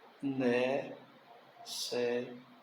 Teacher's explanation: Sílaba forte é a penúltima. Ela é uma palavra paroxítona.